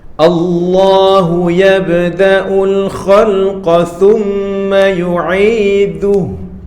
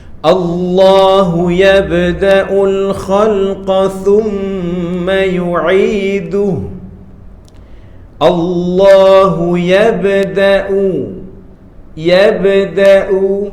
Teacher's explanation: yabdau itulah yang dipanggil sebagai qalqalah melantun ataupun memantul